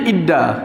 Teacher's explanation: Huruf nun tu sumbat, dia jadi huruf macam dal. Inna jadi idda.